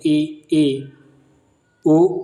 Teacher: जिन स्वरों के उच्चारण में मुख द्वार लगभग बंद रहता है